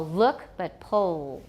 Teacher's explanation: we've got a lot of tightness in the back of the tongue it's getting close to the soft palate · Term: dark L